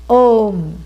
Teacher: phonetically it is made up of a u m a plus u becomes o